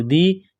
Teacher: یا ساکن سے پہلے زیر ہے، ایک الف کے لمٹ میں یا کو کھینچنا ہے